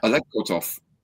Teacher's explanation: you emphasize the second syllable of his name